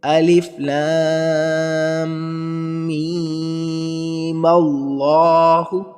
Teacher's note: میم اس میم کو اللہ سے ملا کے پڑھنا ہے اور میم پر بھی مد کریں۔